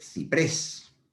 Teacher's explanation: ciprés tiene la sílaba tónica en la última sílaba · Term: palabra aguda